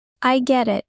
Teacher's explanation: In fast speech, the T in get often sounds like a quick D.